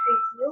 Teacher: For example, the word review can be split into re and view. We emphasize the second syllable, the view part when we speak. This means view is stressed.